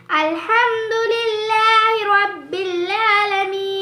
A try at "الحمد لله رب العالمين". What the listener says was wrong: आइन को क्यों नहीं पढ़ रही है? الحمد لله رب العالمين.